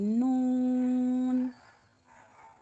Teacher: زبان کی نوک اوپر والے دانتوں کے مسوروں سے لگ کر نون کی ادائیگی ہوگی